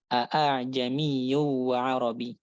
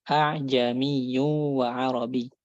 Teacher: Hamzah musahalah bainal fathah wa bainal hamzah muhaqqaqah dan juga alif